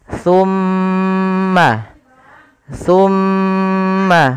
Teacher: ketika mim itu berharakat tasdid wajib ditahan suara gunahnya ya tidak boleh langsung tumma Antum tapi tahan dulu suara mimnya